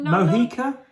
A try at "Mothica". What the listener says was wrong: Mothica. No. There's a TH in it. Mothica.